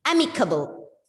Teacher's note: And the first syllable is stressed here.